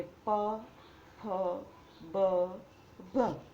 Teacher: હવે આવે છે ઔષ્ઠ્ય. તો જે વ્યંજનના ઉચ્ચારણ વખતે બંને હોઠ ભેગા થઈ જાય તેને ઔષ્ઠ્ય વ્યંજન કહે છે.